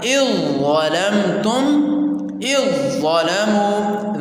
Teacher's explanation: ذال بیچ میں سے ختم ہو جائے گی